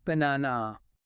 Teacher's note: But when we say it naturally, the first and last A's become weak